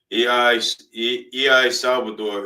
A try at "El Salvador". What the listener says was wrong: El Salvador, not EI Salvador. El Salvador. El Salvador.